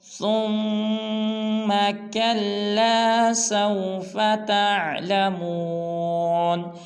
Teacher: ثم پہ غنہ کریں گے، یعنی کہ ناک میں آواز لے جائیں گے